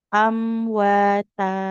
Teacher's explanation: Kalau kita waqaf maka mimnya tidak dibaca ya, tidak berpengaruh. Kita cukup baca huruf tanya-nya panjang dua harakat.